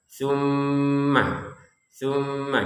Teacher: Jadi ditekan plus dengungan juga dua harakat. · Tapi tsumma ada di rongga hidung kita itu dengungan yang kita rasakan ketika mengucapkan tsumma